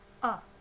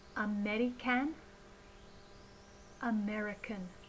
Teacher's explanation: The first unstressed sound is the schwa sound. So instead of a in the syllable can in American, we should be using the schwa sound. Schwa is an unstressed sound like this, a.